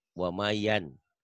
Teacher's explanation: Yan, jadi berubah jadi yam. Jadi bunyi M. Tapi disertai dengan bindeng. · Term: ikhlab